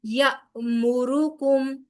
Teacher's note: حمزہ کے اوپر جزم ہے، لہٰذا جھٹکے کے ساتھ ادائیگی ہوگی